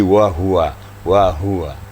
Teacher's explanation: huruf H ini makhrajnya adalah mendekati dada